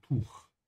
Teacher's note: the CH has this vibration at the end because it comes after a U